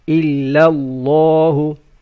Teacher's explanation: The lamb of Allah is full mouth.